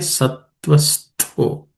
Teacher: The tha at the end, stho is an aspirated consonant, the second letter in the the varga, third class of consonants.